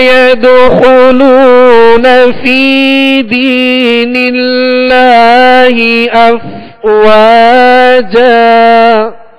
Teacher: فا کو بھی ایک الف کی مقدار یعنی دو حرکت کے برابر کھینچیں گے